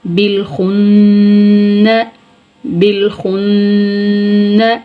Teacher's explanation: با لام زیر بل، خا نون پیش خن، نون زبر نا، بالخن، بالخن. خا کو پر پڑھیں گے اور نون مشدد آ رہا ہے، گنہ ہوگا